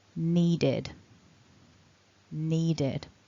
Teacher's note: a voiced consonant, a d, we're adding the id to represent that ed ending